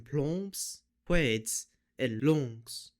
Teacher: S in word final clusters BS, DS, and GS will also have the S be assimilated to voiced Z